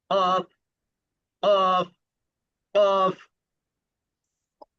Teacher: এরপরে যখন নিঃশ্বাস বন্ধ করা হবে তখন জিহ্বার গোড়া দিয়ে কণ্ঠনালীটা ব্লক হয়ে যাবে, অর্থাৎ জিহ্বার গোড়াটা অপর প্রান্তে গিয়ে লেগে থাকবে। যখন লেগে থাকবে সেখান থেকে ঝটকা টান দিয়ে ছুটাবেন আর সজোরে ধাক্কা দিয়ে বলবেন অফ, অফ, অফ।